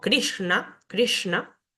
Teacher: sh tenemos luego esta s que al tener un puntito debajo es un sonido cerebral se pronuncia con la lengua hacia el paladar superior